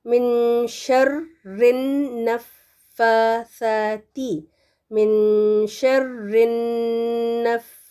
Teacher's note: من شین میں تھوڑا سا چھپائیں نون کی آواز کو